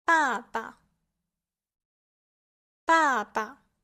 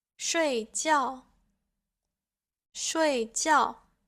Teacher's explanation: The fourth tone is marked with a line that goes downwards, and this is because the pitch goes from a higher to a lower pitch. And so this tone is a falling tone, and it sounds very declarative and affirmative.